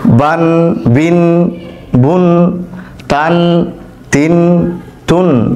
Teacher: এই তানভিন উচ্চারণ করার ক্ষেত্রে শেষে ন উচ্চারিত হবে। বাংলায় দন্ত ন যেটা রয়েছে সেটা উচ্চারিত হবে, বান, বিন, বুন, তান, তিন, তুন।